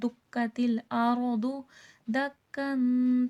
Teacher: اذا، زال درمی کے ساتھ پڑھا جائے گا۔ دکتل الارض دکن، تنوین غنہ کیا جائے گا۔ دکا، دو زبر ہے، دو زبر کا وقف ابھی میں نے بتایا ہے، وقف میں ایک زبر اسکپ ہو جاتا ہے، ہٹ جاتا ہے، اور ایک زبر رہ جاتا ہے جو کہ الف مدہ بن جاتا ہے۔